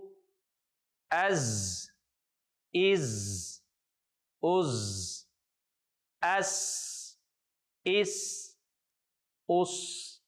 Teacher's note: زا اور سین ان دونوں کی جو ساؤنڈ ہے اس میں سیٹی کی آواز آتی ہے، اس لیے اس کے آخر پہ آپ کو سیٹی کی آواز جو ہے وہ سنائی دے گی۔